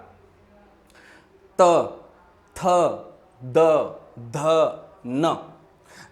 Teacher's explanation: आपकी जीभ जो है कहां से कहां को छू रही है, आपके दांतों को, इसीलिए इसे कहा जाता है क्या, दंतव्य कहा जाता है।